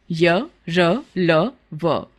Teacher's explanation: पूरी तरह से स्पर्श नहीं करती उन्हें अंतस्थ व्यंजन कहते हैं इनके उच्चारण में सांस का अवरोध बहुत कम होता है · अंतस्थ व्यंजन अंतस्थ का अर्थ है भीतर या बीच में स्थित जिन व्यंजनों का उच्चारण करते समय जीभ मुख के भीतर किसी भाग का पूरी तरह से स्पर्श नहीं करती उन्हें अंतस्थ व्यंजन कहते हैं